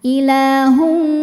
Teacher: hukum idgam bunah karena ada tanwin dammah menghadapi huruf wau maka bunyi tanwin langsung masukkan ke wau disertai dengung